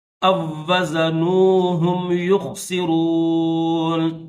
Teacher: دوستو اس لفظ میں دیکھیں 2 واو ہیں حمزہ کے بعد، یہ جو الف ہے، الف کے بعد 2 واو ہیں، ایک واو ساکن ہے اور دوسرا واو مشدد ہے۔ اس میں واو ساکن یہ سائلنٹ ہے، اس الف کو ڈائریکٹ دوسرا جو واو مشدد ہے اس کے ساتھ ملائیں گے